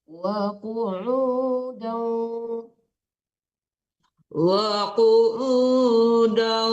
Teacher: wa qu'udan itu ditarik ke hidung, jangan dan dulu baru ditasdidkan ke waw ya. Itu nggak ada tasdid tetap dengung ya ke hidung bawahnya.